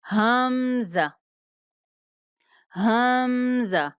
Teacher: حمزہ اقصائے حلق سے ادا ہوتا ہے جو سینے کی طرف ہے۔ عین زا، عین زا۔